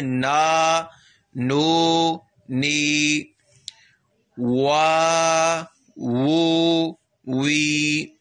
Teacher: آواز الف جو ہے جب وہ ادا ہوتا ہے تو گلے سے اس کا مخرج ادا ہوتا ہے, اس کو واضح کر کے پڑھیں.